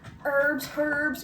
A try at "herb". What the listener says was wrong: Herb. It's herbs. You don't pronounce the H.